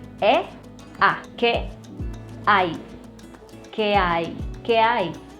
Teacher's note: we're gonna link the last vowel of the first word with the first vowel of the second word.